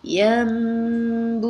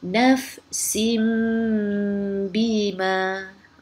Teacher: Cara bacaannya menukar bunyi nun kepada bunyi mim dengan dengung. Dengung maksudnya kita menahan suara kita dengan kadar 2 harakat. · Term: iqlab